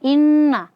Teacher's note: kita ketemu dengan nun yang bertasydid. Nah, gunnah musyaddadah, maka di sini kita baca 2 harokat. Inna kita huruf ta fathah setelahnya alif, maka di sini mad tabi'i dibaca 2 harokat.